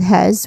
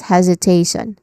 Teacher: Pronunciation wise, hesitations start with hes, which has a buzzing sound, voiced z sound, and then followed by hesitation, which has a diphthong sound a, and then tion, shon.